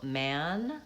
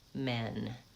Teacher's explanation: So man men tan 10. So I'm saying vowel a and then vowel e slightly higher